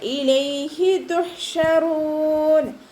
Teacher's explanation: ഹ സൗണ്ടിനെ തൊണ്ടയുടെ മധ്യഭാഗത്ത് നിന്ന് തന്നെ കൊണ്ടുവരാൻ ശ്രദ്ധിക്കുക കേട്ടോ. ഹ എന്നുള്ള സൗണ്ട് തന്നെ കൊടുക്കുക.